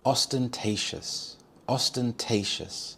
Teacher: The stress is on the third syllable.